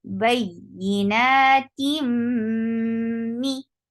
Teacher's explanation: you're keeping the sound in your nose for a longer period of time because this is gunna, akmal gunna. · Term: idgham with gunna